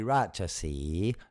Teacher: the J is actually more of a CH in this case